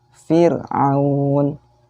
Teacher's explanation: huruf ro di sana sukun didahului oleh harokat kasroh. Jadi dibacanya tipis